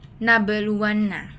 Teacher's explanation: huruf ba dipantulkan secara ringan. Contohnya nabeluanna dengan ba terdengar memantul.